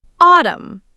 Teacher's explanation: The N is indeed silent, making it autumn.